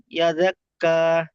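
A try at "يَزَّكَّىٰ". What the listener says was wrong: এজাক্কা নয়, জালের উপরে তাসদিদ, দুবার পড়তে হবে জালকে। ইয়াজ্জাক্কা, ইয়াজ্জাক্কা।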